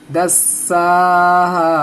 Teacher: दाल को सीन से मिला देना है और सीन को दोबारा पढ़ना है खड़ा जबर लगा के